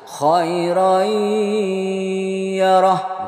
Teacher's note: tanwinnya masuk ke ya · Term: idgham bigunnah